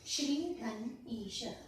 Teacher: यहाँ श्र के बाद का जो ई है, दीर्घ इकार है, वो आगे के दीर्घ इकार से मिल रहा है।